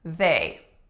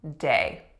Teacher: if you do not put in that voiced th unless say instead you put in a d they can really easily become day